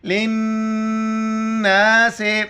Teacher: لام زیر لے نون الف زبر نا، لام نون زیر لن نون الف زبر نا سین زیر سے للناس. لام کو نون کے ساتھ ملائیں گے، اس لام کو نہیں پڑھیں گے